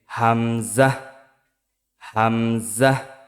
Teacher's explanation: হামজা একই স্থান থেকে উচ্চারিত হয় কণ্ঠনালী শুরু থেকে